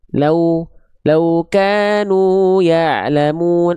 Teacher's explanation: kalau wawu sukun bunyinya u bukan o